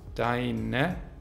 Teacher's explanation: Die reduzierten Formen von dein sind deine mit e-schwa